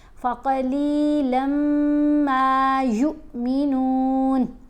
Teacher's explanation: یہ واو ساکن نہیں، یہ حمزہ ساکن ہے. جب حمزہ ساکن ہو تو پھر ہم نے لمبا نہیں کرنا، پھر ہم نے اس لیٹر کو جھٹکا دے کر پڑھنا ہوتا ہے